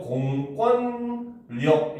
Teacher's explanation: 앞에 공이 붙어가지고 공권력 이렇게 하면은 오히려 비음화가 일어나서 공권력 이렇게 소리가 납니다. 앞에 공이 붙냐 안 붙냐에 따라서 발음이 완전히 바뀌어버린다는 거야.